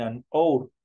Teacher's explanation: la H no tiene sonido se va directamente hacia la vocal